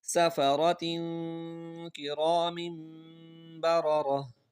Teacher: دو زیر کے بعد کاف آ رہا ہے، تو یہاں پر بھی غنہ ہوگا